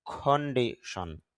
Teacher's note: কেন সি আসছে সি এর উচ্চারণ ক হচ্ছে এজন্য এখানে এসপিরেশন হবে